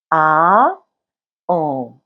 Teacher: le en vient du a et ouvre la gorge vers le bas